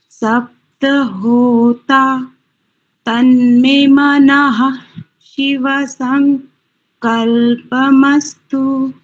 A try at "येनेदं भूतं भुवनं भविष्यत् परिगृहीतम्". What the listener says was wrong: देखो ना, भविष्यता, तामे तो हलंत लगा है, तो हलंत अक्षर को तो आधा बोलते हैं, जिसके नीचे हलंत लगा होता है उसको आधा बोलेंगे, तो भविष्यता ना करके भविष्यत भविष्यत ऐसा उच्चारण करेंगे।